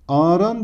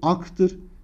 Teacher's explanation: Ağaran derken kelimenin kökü aktır. K sesinin yumuşayarak yumuşak G'ye dönüştüğünü görüyoruz. Yine bu da ünsüz yumuşaması olarak karşımıza çıkmaktadır.